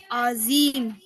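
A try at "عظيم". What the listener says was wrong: No, I don't want to hear Z. Azim. Put your tongue out on the feet. Underneath.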